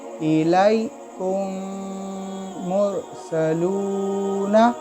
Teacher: मुशद्दद वाला हर्फ 2 बार पढ़ा जाता है ना, इस तरीके से। तो 3 मीम है, मगर हम सिर्फ 2 मीम को अदा कर रहे हैं।